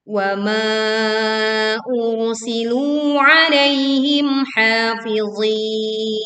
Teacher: wa ma dibaca panjang 4 sampai 5 harokat. Ini juga tebal karena ro sukun didahului dhammah.